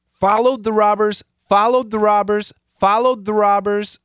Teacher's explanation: Normally, I like to say 20% D because the D and the TH become one sound